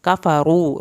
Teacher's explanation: रा को पुर करें, वाव साकिन को खींच के पढ़ें